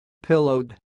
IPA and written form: 'pɪloʊd (pillowed)